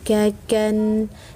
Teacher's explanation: pangkal lidah himpitkan ke langit-langit mulut bagian tengah